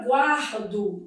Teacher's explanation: Na palavra guardo dividindo em sílaba, ó, eu tenho aqui um encontro consonantal imperfeito. O U é pronunciado, é uma semivogal e o A é vogal.